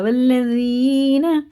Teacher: سے کھینچیں گے، اور یہ والذین ہے، زینہ نہیں پڑھیں گے، نہ جینا پڑھیں گے نہ زینہ، ذال باریک ہوتا